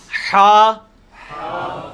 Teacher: حلوائی والا جو ہا ہے، یہ وسط حلق سے یعنی حلق کے درمیان سے نکلتا ہے. یہ کبھی آپ وہ گلے والی ٹافی کھائیں نا، وہ والی آواز ایکزیکٹ بالکل کلیئر وہاں سے جو نکلتی ہے نا، یہ ہا کا مخرج وہی ہے.